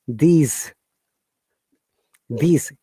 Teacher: Though these words have S at the end, but they don't sound like S. This S sounds like Z.